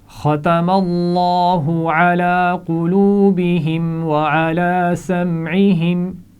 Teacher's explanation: لام جلالہ سے پہلے زبر ہے تو اس کو موٹا پڑھا جائے گا